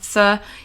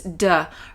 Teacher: instead of the TH sound, th, he says duh, right? So he says dot instead of thought.